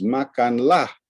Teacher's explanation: he has this fall rise fall in the first syllable but it's the second syllable that really is more prominent